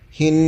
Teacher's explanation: এক আলিফ টান হা নুনের সাথে নুনের সাথে মিলায় পড়তে হবে তাজদিদ আসার কারণে নুনের উপরে তাজদিদ ওয়াজিব গুন্না করতে হবে তাজদিদের পূর্বে খালি আলিফ পড়া হবে না হিন্নাস মধ্যে আরজি তিন